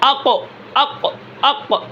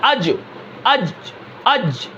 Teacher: سانس بند ہو جاتا ہے، آواز میں بلندی ہوتی ہے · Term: جہر